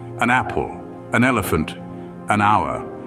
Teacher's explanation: an hour notice that it's about the sound not the letter hour starts with a consonant H but because it's silent the word starts with a vowel sound